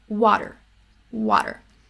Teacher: Like, it's not water, it's water. So that flap T is actually, it's happening so fast, right? It sounds like a D sound.